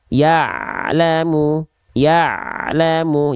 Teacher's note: Ain sukun tidak boleh terputus suaranya ya gitu karena Ain punya sifat namanya adalah tawasud ya suaranya · jadi dia antara E itu dengan la tidak boleh ada jeda